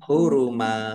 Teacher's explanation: Karena waqaf dibaca fathah dan panjang dua harakat namanya mad iwad